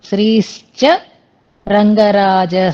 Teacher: శ్రీశ్చ రంగరాజ అక్కడ విసర్గలు అస్సలు ఉండకూడదు